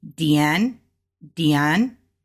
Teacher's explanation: Since we have two fourth tones side by side, we know we need to make the first fourth tone a second tone, which means we need to go up when we're saying it and then come down on the sh.